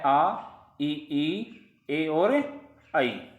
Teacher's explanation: अवृत्ताकार में ओठ की आकृति गोल नहीं होती है